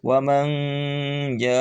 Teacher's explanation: Ja panjang karena alif sebelumnya fathah dan hamzah dalam satu kalimat